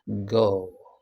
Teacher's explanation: Then we have g, g, g. The point is voiced, and the point of articulation is also velar. The manner of articulation is plosive.